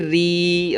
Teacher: را باریک ہوگا، زیر آ گئی